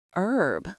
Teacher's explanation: In British English, the H is pronounced, so they would say herb. But in American English, which is often taught globally, the H is silent. It's pronounced herb.